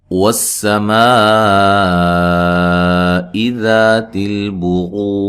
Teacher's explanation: سین کو باریک سیٹی سے ادا کرنا ہے، واو کو ادا کرتے ہوئے ہونٹوں کو گول کرنا ہے، اور میم پہ جو مد ہے یہ مد واجب ہے۔